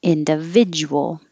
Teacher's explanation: the du together makes a ja